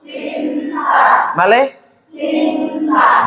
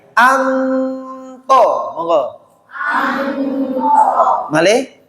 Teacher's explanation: tidak ada ng-nya tapi lebih banyak ikhfanya